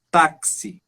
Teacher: Ou tu pode ter um X, por exemplo, táxi, um som de KS